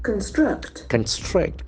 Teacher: Can see the accent falls on the second syllable.